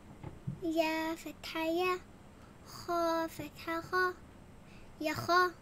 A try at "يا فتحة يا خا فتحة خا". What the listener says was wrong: So you eat the alif.